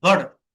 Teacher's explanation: flap টি ড এর মতো হয়